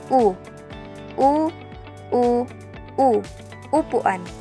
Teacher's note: Sa pagbigas naman ng letrang U, ang bahagi ng dila ay palikod at ang ayos ng dila ay nasa mataas. Ang letrang U ay binibigas sa paraang U.